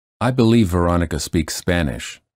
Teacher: Notice how two same or similar consonants blend into one to link words more smoothly. The final stops are not released.